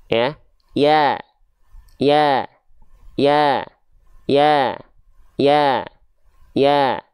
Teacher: Ketika dia berharokat fathah, ya, vokalnya adalah A, buka mulut sambil senyum.